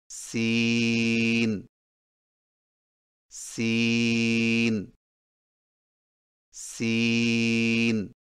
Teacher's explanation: سین کی ادائیگی میں زبان کی نوک کو سامنے والے نیچے کے دو دانتوں کے کناروں سے مضبوطی سے لگا کر باریک اور سیٹی جیسی آواز میں پڑھیں